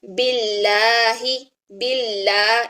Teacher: جب اس میں جلالہ سے پہلے زیر آ جائے تو اس میں جلالہ کا لام باریک پڑھا جاتا ہے، جیسے کہ باللہ، باللہ، اس میں جو ساؤنڈ ہے وہ آ کی ساؤنڈ ہے، اس میں پڑھیں گے ہم لا، ٹھیک ہے، اور اس میں ہم نے پڑھا تھا لا، ٹھیک ہے، یہ ساؤنڈ ہم نے رکھنی ہے۔